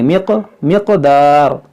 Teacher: यहाँ नून साकिन के बाद दार, यहाँ पर इख्फ़ा का कायदा लगेगा। यहाँ काफ हुरूफ़े क़लक़ला है, तो इसमें क़लक़ला करेंगे